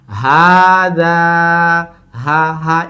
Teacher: হা দা, 2টাই টান, হাতেও টান, যাতেও টান।